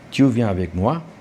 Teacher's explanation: you have to raise the intonation at the end